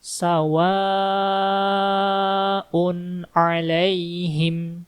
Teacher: Kami membacanya selama empat harakat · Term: mad wajib muttasil